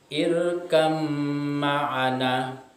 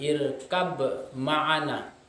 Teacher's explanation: Tulisannya adalah irkab ma'ana, tetapi dibaca menjadi irkam ma'ana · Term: idgham mutaqaribain